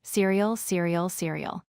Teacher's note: End with ool. Stress first part, seer e ool.